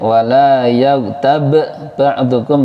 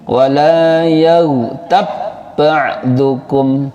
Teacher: ba sukun bertemu ba, qol-qolahnya dihilangkan. Qol-qolahnya wajib hilang, jangan qol-qolah lagi.